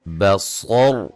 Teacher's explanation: صاد کو موٹا، را کو موٹا، با کو باریک پڑھیں گے، را وقفاً موٹی ہوگی.